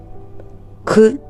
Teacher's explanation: це приголосний він не співається і вимовляється як за допомогою язичка і зубок